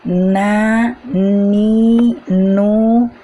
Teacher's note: pada huruf nun hanya ujung lidah saja yang menempel ke ujung langit-langit pada pengucapan huruf nun ini juga disertai dengan udara yang mengalir